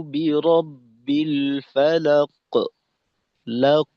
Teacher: বন্ধ থাকার সময়টাকে একটু বাড়াইয়া ফিরতি আওয়াজটাকে আর একটু মজবুত করা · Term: মোটা কলকলা